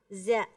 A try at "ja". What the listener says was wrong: Jangan ada desisnya, bukan za tapi ja. Ja.